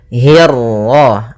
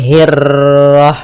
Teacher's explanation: untuk huruf ra ketika dia berharakat tasydid itu atau dia berharakat sukun, dia ra-nya 1 kali takrirnya. Tidak boleh banyak-banyak, tidak boleh hirrah.